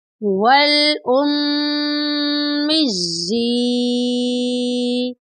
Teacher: واو لام زبر ول، حمزہ میم پیش میم یا زیر مج، یا کھڑی زیر یی، والأمِّيِّ، یہاں پر میم مشدد ہے، میم مشدد پر غنہ کریں گے۔ غنہ کا مطلب ہے ناک میں آواز لے جانا، اور یہاں پر یا کے نیچے کھڑی زیر ہے، اس کو بھی لمبا کریں گے۔